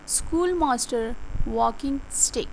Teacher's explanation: When saying them, it is important to place a stress on the first syllable.